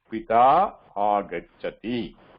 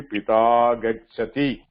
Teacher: The one of the a will get dropped.